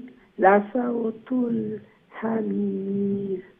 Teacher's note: হামির এন্ডে দিয়ে মধ্যে আরিজ লম্বা হইব